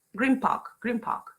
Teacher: when you say Green Park fast enough yeah Green will change to Grim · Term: simulation